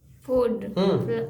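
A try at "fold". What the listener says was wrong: एफ है। एफ के साथ ओ पढ़ना है कि एल के साथ डबल ओ पढ़ना है? फूड के एल कहाँ गया? एफ पूरा है या एफ अधूरा है?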